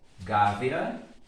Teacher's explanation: Qual o som que sobressai? Letra A. Portanto, E funciona como semivogal.